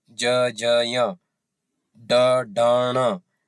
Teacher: अब स्पष्ट है कि उच्चारण में कंपन हो रहा है। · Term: सघोष